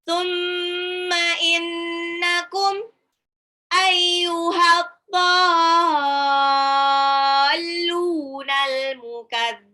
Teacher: Alif lam samsiah di ad-dhalun, alif lamnya tidak dibaca karena langsung lebur ke dot. Dotnya itu lihat, perhatikan ada harokat alis ya di atasnya alif tuh.